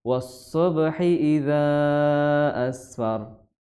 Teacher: mad jaiz munfasil di riwayat Hafs an Asim dari jalur Syatibiyah ya, hukumnya 4 atau 5 harokat ya.